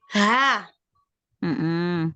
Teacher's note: Coba yang H besar dari tenggorokan bagian bawah.